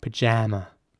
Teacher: in American English it would be more like pajama with an a sound in the middle